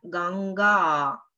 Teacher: так же вы можете обратить внимание на длительность и гласных 1 а будет короткая тогда как вторая будет длинная